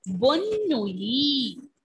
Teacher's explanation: Ending letter T will be silent.